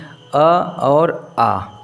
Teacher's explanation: वर्ण होता है तो देखते हैं यह जो कंठ वर्ण है जो कंठ से जिसका उच्चारण होता है ऐसे स्वर वर्ण है अ और आ